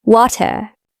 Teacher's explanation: So water can sound like w in bre. The t is usually a crisp strong t sound.